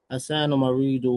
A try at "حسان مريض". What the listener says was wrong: Okay, but when you say Maridun, we have to hear the tanween nice and clear. Now, so the tanween helps you in your articulation.